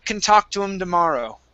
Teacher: So I'm dropping that H